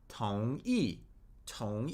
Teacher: So the tone on tong is rising. It's the second tone. And then e is the fourth tone or the falling tone.